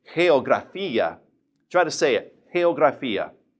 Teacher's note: the G is in front of an E, so therefore we would say it like a breathed H